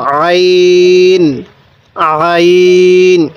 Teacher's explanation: আইনের মধ্যে গলার মধ্যে চাপ দিয়ে পড়ব। আইন, আইন, এরকমভাবে পড়ব।